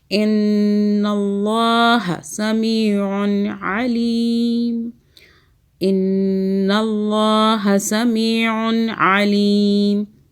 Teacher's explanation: عین کو حلق سے پڑھیں، نون مشدد پہ غنہ کریں 2 سیکنڈ کا. اللہ کو موٹا پڑھیں، ان اللہ، ٹھیک ہے.